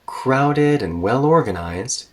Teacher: two adjectives here connected with and and when we have that they're usually both spoken with kind of a high tone and usually there's another dipping or rolling intonation there it felt